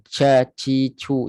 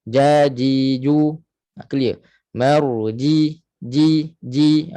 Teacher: Jim ini tidak ada angin maksudnya dia jahrun nafas ataupun angin itu tersekat dia tidak ada bunyi angin